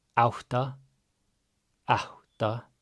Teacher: A with an accent is ow. We have our double T's, so we're going to have that pre-aspiration. And then A is just ah.